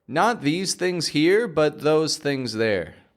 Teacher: three voiced th sounds two voiceless